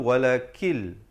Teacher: Walakil di situ nun mati bertemu lam idgham bila gunnah. Jangan baca walakin.